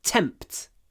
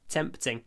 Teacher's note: try to get a lot of T aspiration tempt T the p and the T are both aspirated tempt